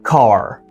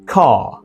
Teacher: In American English, you are gonna produce those R letters, those R sounds. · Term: American R